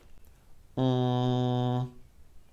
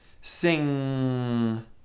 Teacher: with front of tongue freedom first make an ng sound [Applause] ng is made by the back of our tongue raising to touch our lowered soft palate blocking sound from entering the mouth and causing it to go through the nose if you have trouble finding this sound say the word sing